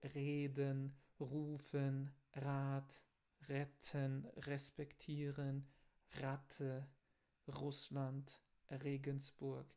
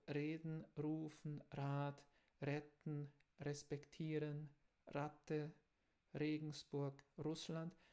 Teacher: o alemão padrão é com o R, que vem da garganta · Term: R alemão